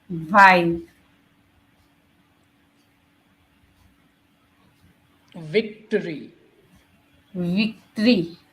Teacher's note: V sound for van is a vibrating sound. Again, just like F, you make the mouth, lower lips, upper teeth, and say V.